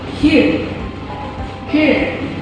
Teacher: So in British English, the post-vocalic is usually silent, so here becomes here, not her. But when it's followed by a vowel like in here and now, the R is pronounced